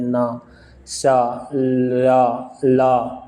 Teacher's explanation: जिह्वा की नोक दंत पंक्तियों का ऊपरी भाग का स्पर्श करती है